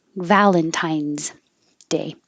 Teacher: this looks like an S but sounds like a z